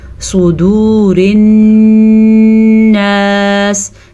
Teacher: سواد کو پر پڑھیں گے اور نون کا غنہ لازمی ادا کریں گے